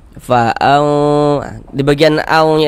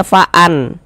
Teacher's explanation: itu suaranya itu kita tahan, kita panjangkan sejenak kira-kira sepanjang dua harakat. Jangan dibaca faan. · Bunyi nun sukun atau bunyi tanwinnya kita baca samar. Kemudian disertai dengan dengungan, disertai dengan gunah. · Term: ikhfa hakiki